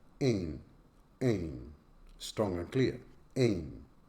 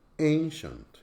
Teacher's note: ancient, is a two-syllable word with a stress on the first syllable